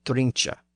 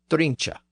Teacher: This was a common Southern form with the CH ending in place of the hard K. This softer CH ending still survives in the word drench, drink and drench ultimately being two different versions of the same root word.